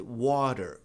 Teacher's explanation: Veja aqui, o T vem precedido e seguido, ele vem ladeado por vogais. Quando o T vem ladeado por vogais, em uma sílaba átona, ou seja, não é a sílaba forte, ele pode ser pronunciado como o R que a gente encontra em era, garapa.